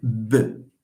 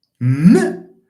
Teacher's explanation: When you compare, for example, B with M, M is louder. Why? It's because the air passes through the nose and there is more room for making, the sound more loud. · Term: sonorant